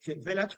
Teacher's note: la vocal que queda en medio sería lo que llama una schwa, es decir, una vocal muy debilitada que es casi un sonido así, no es I ni A, sino village.